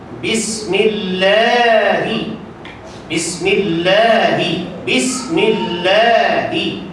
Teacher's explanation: mad tabi'i ini wajib dibaca dengan qadar panjang 2 harakat, ataupun menyamai satu alif.